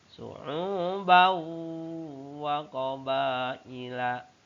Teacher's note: suara tanwin dimasukkan ke dalam bunyi waw. Suara tanwinnya bau, su'ubau wa qabaila. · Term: idgham bigunah